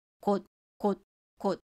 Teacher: The important thing about the final consonant is that its sound is not released or heard when we pronounce them. So these three examples here have all the same pronunciation, quote, quote, quote, until we connect them with the vowel sound in the next syllable.